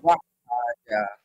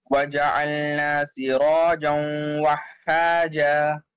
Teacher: In Alif Madda, stretch only for 1 second, no more than that. Here you have to connect the vowel with the ha properly, hold it for 1 second because of the shadda sign here.